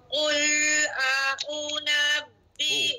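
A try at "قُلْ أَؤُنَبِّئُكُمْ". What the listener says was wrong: U. Bacaan dia satu harakat. Ha pendekkan sikit pada u.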